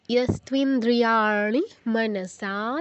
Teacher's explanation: নয়ের উচ্চারণটা যেন শুনেই বুঝতে পারে সবাই যে এখানে মূর্ধন্য আছে, দন্তন্য নয়, নি নয়, ঋ।